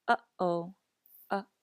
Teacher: The okina is often called a glottal stop, and the best way to describe it is with the word uh-oh. Do you hear the back of your throat closing before each of these vowels?